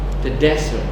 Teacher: The desert, ya, stressnya di des itu.